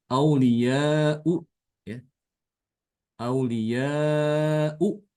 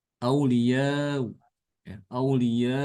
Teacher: yang Tasil dia dibaca tengah-tengah antara Hamzah dengan huruf mad wawu